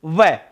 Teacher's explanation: और वह को तो आप बोल करके देख लो, वह ऊपर वाले दंत, नीचे वाला ओष्ठ, तो वह का उच्चारण स्थान क्या हो जाएगा? दंत और ओष्ठ। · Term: दंतोष्ठ